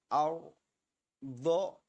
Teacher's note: ro tebal, ro tafkhim, agak diangkat, lidahnya diangkat. Ar do kemudian dikuatkan.